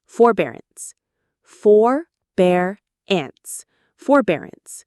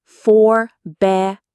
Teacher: The stress is on the second syllable. Bear. Forbearance.